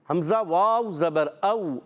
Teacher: حمزہ کو واو سے ملائیں گے. حمزہ واو زبر او. اچھا ہونٹ گول ہو جائیں گے